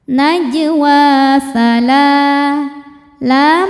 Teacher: Sebab lam berharakat fathah panjang. Cara bacanya dipanjangkan dua harakat. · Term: mad thobi'i muqaddar